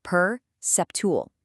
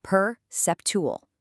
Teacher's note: It's four syllables with the stress right on the second one.